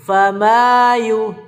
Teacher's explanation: mat tabi'i itu cukup diayun 2 harokat saja.